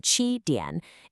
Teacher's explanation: Because of something called tone sandhi, when a third tone comes before another tone, like in qi dian, it often becomes a half-third. You just do the falling part.